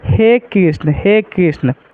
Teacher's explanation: प्लुत स्वर के उच्चारण में जो है दीर्घ स्वर से अधिक जोर लगाना पड़ता है।